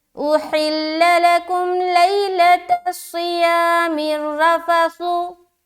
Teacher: इस रा को मोटा भी रखना है, रफ़सु, क्योंकि राय मुशद्ददा के ऊपर क्या है, जबर है।